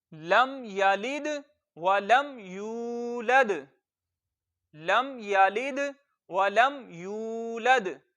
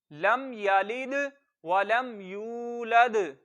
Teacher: اس پوری آیت میں صرف یا کو لمبا کرنا ہے